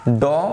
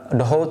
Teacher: ড অল্পপ্রাণ ঢ মহাপ্রাণ